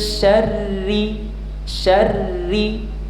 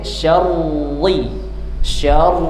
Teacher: huruf ra yang berharakat kasrah. Maka dia dibaca dengan tipis atau ringan disebut dengan tarqik.